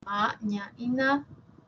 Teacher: nasales, ¿sí? Ma, ña y na, que tienen siempre la úvula despegada de la pared faríngea. Una es bilabial, como es esta imagen, la otra es palatal y la última nasal, alveolar.